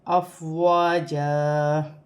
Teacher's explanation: الف سے پہلے زبر ہے تو الف مدہ بن رہا ہے، یہاں پر بھی اسے بھی 1 الف کی مقدار کھینچ کے پڑھا جائے گا۔ 2 زبر کی تنوین وقف کی صورت میں 1 الف مدہ میں بدل جاتی ہے، یہاں وقف ہوگا تو افواجا۔